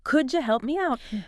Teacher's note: That D at the end of could and the Y at the start of U merge into that J sound again. Could you and help me out just flows together like help me out.